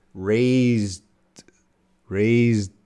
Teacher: that D is very reduced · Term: reduced TD